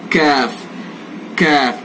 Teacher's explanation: जबान की जड़ से थोड़ा सा आगे को आ जाएंगे, थोड़ा सा ऊपर को उठेंगे तो काफ अदा हो जाएगा